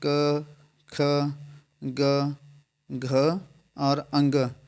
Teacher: क ख ग घ और अंग इनका उच्चारण स्थान क्या होता है ये कहां से बोले जाता है तो ये कंठ ध्वनि है